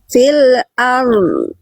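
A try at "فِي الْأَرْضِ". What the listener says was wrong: Itu jadi masih ar. Nah, ini berhenti di ro ini. Fil ar. Nya mana? Jadi dotnya, makhraj dotnya yang yaitu samping lidah tempel. Setelah ro beres, tempel makhraj dotnya. Alirkan suaranya, tunaikan sifatnya. Fil ard. Ini ro, bukan ad. Kalau dot itu samping. Ad. Fil ard. Fil ard. Ro dulu ard, baru masuk pindah ke samping.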